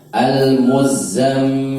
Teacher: Za dibacanya cuma 2 ketukan, mim dibacanya lebih dari 2 ketukan.